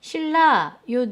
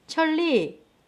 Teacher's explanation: 자, 화면에이 난자와 로자가 있는데 받침에 니은 있죠? 니은이 리을 때문에 리을로 바뀌어요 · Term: 유음화